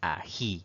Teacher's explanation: notamos que tiene dos sílabas pero la mayor fuerza de voz la mayor intensidad al pronunciar esta palabra recae en la última sílaba eso la convierte en una palabra aguda Y sí debemos colocarle